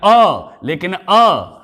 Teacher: यह है हमारा मध्य स्वर है, क्योंकि यह मुख के मध्य भाग से उच्चरित होता है